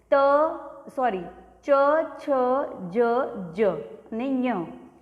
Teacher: ચ વર્ગ આવે જે તાલ્ય હોય, મતલબ આપણા તાળવાથી જીભ ટચ થઈને બોલતા હોય